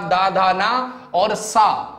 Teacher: जिन व्यंजन ध्वनियों के उच्चारण में जो जिह्वा है दांत को स्पर्श करती है, ऐसे उच्चारित व्यंजन दंत कहलाते थे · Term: दंत ध्वनि